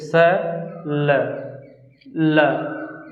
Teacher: बोलते समय जीभ ऊपरी दांत के अंदर वाले हिस्से को टच करता है। स, देखिए स ल, दांत के ऊपरी वाले भाग को टच कर रहा है।